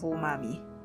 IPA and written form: uˈmɑːmi (Umami)